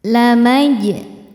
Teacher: Jimnya hukumnya qalqalah sughra, sebab ada huruf qalqalah yaitu jim yang sukunnya sukun asli dan ada di tengah bacaan. Cara bacanya memantul dengan pantulan yang kecil.